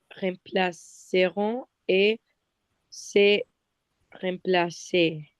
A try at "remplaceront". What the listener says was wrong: Rappelle-toi, c'est pas rem placé, mais c'est rang. Rang.